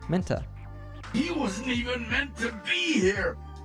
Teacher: Then, as you might have learned in other lessons we've made, the word to gets reduced to t. And when we have a word ending in a T sound followed by another word starting with a T sound, it's common to merge those two T sounds